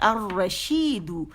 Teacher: دو کر کے لمبا نہیں کریں گے، ٹھیک ہے، اور شی کو بھی زیادہ نہیں کھینچیں گے